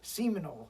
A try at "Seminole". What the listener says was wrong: It's AL, not OL. Seminole. Seminole. Seminoles. Yeah, that's with an O. Seminoles.